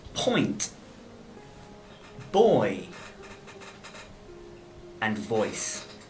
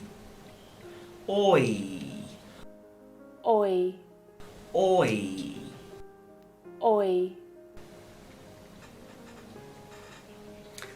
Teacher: we're going from the rounded or to the unrounded e